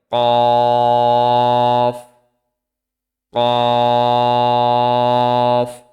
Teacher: তারপরে আসি কফ। জিহ্বার গোড়া তার বরাবর উপরের তালুর সঙ্গে লাগিয়ে উচ্চারিত হয়